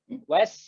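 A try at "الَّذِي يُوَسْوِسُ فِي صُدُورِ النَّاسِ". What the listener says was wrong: Nah, jangan wase. Jangan wase. Jadi kalau lidahnya ditarik pindah ke makhraj selanjutnya dia pasti ini, pasti mantul.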